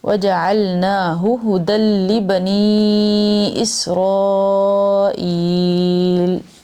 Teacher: نا کو بھی کھینچنا ہے کیونکہ اس پہ کھڑی زبر ہے نون پہ